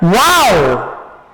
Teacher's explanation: She's here. Wow! My tone went up. · A falling intonation. So, we may begin an exclamation with a rising tone, but it has to end with a what? A falling intonation. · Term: rising intonation